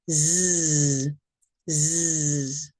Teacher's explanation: S. The Z sound is voiced. You can feel the vibration and hear a buzzing sound.